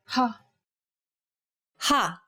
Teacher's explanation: the sound of the letter h in the english word hat saying this sound involves a forceful expulsion of air